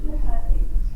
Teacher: Can you hear how the first syllable is clearer and stronger than the second? So this one refers to the primary stress.